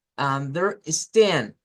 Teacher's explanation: se sube y decimos stand con más fuerza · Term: stress syllable